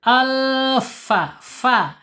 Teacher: Fa makhrajnya ada di asyafatain ya. Asyafatain yaitu dua dua bibir.